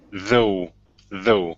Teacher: give me a good th here at the beginning instead of so or though